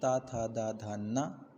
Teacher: इन सब का उच्चारण दांत से होता है दंत बोलते हैं इनका दंत व्य बोलते हैं दंत्य वर्ण इसमें